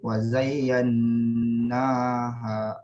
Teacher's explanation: wazayyan nun syaddah, panjangkan sikit. Wazayyannaha, ada alif kecil kat sini, alif maksurah.